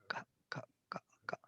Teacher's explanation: It must touch one part. The back tongue touches the soft palate.